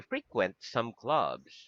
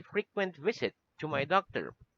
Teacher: the word frequent the accent is in the first syllable is an adjective